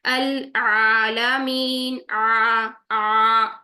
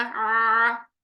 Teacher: आपने जुबान को नीचे और पीछे की तरफ प्रेस करना है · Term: आइन